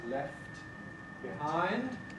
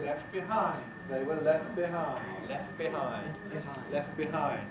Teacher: we also get simplification of voiceless clusters such as ft and st where the t disappears